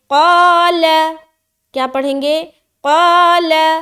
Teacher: اب دیکھیے قاف کے ساتھ الف لگ کر آ رہا ہے، اور قاف موٹا حرف ہے، لہٰذا الف بھی موٹا ہو جائے گا جب ہم اسے لمبا کریں گے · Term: الف مدہ